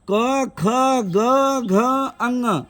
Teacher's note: क ख ग घ अंग और ह और विसर्ग का उच्चारण कंठ से होता है